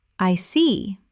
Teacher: When you show understanding with, I see, your tone drops slightly to show calmness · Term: falling tone